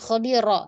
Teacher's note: Rohnya digetarkan ya Om, dilatih supaya ada getar.